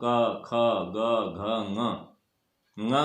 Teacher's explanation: तो क वर्ग का उच्चारण स्थान कंठ है